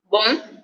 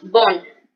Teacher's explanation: En la pronunciación del masculino es como más nasal y el femenino es más normalito